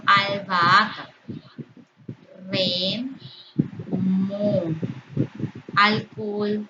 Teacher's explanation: Eso no impide la formación de el hiato. Y son todas emisiones de vocales abiertas, de dos vocales abiertas. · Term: hiatos